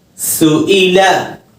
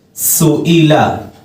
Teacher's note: سیٹی کا خیال رکھتے ہوئے سین ادا کرنا ہے، حمزہ کی ادائیگی حلق کے آخری حصے سے کرنا ہے۔